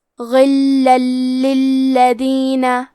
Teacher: ادغام کا معنی ہے حرف کو حرف میں داخل کرنا، تو ہم تنوین کو لام میں ملا کے بغیر غنہ سے لیکن تشدید کے ساتھ یہ حکم کو ادا کریں گے۔ غلا للذین، کلمت للذین میں یہاں حرف اللام پہ تشدید ہے تو ہمیں 2 حرف کے برابر لام کو پڑھنا ہے۔